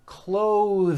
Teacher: notice how my tongue comes out in the middle of the word and the th sound is pushed out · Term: voiced th sounds